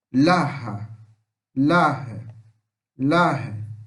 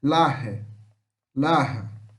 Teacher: Você fala um A como se estivesse puxando pro E, o nosso E. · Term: som de A